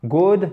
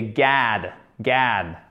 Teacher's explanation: C'est entre le A et le O, mais c'est tout de même plus proche du A.